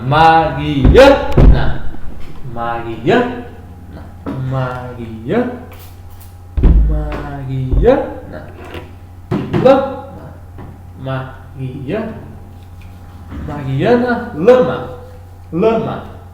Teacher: são duas palavras paroxítonas, né? A sílaba tônica é a penúltima.